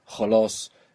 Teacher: we have another sound we can describe like a H sound, but with friction